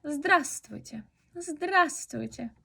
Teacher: Decimos здравствуйте, no pronunciamos la V, es complicado.